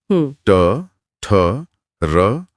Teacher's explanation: इसमें जीभ वास्तव में पीछे मुड़कर ऊपर छत पर हल्का सा प्रहार कर रही है। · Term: रेट्रोफ्लेक्स